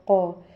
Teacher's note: قاف دو نقطوں والا ہے، یہ بھی حلق سے پڑھا جاتا ہے اور پلس یہ موٹا پڑھا جاتا ہے